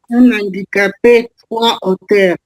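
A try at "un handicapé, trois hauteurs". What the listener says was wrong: Alors ici, c'est 2 H aspirés. Donc, un handicapé, pas un handicapé. Un handicapé. H aspiré. 3 auteurs, H aspiré aussi. Tout ce qui est la famille de haut, haute, auteur, c'est H aspiré. Si vous dites 3 auteurs, c'est 3 écrivains. 3 auteurs. C'est 3 écrivains.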